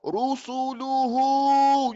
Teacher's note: You keep your lips forward all the time. No movement. They are pressed forward.